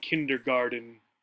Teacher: The only difference here when we are saying it in English is the T, right, gets a D sound